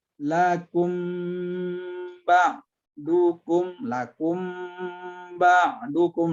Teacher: Hukum yang ketiganya adalah ikhfa safawi, yaitu ikhfa artinya menyembunyikan, safawi huruf bibir, ya, huruf bibir. Ya, mim sukunnya kita ya sembunyikan kepada ba yang menyambutnya